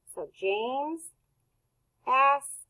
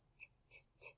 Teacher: the ED in asked is saying t because the K is unvoiced and it's there's no vibration, so that means ED is going to be unvoiced.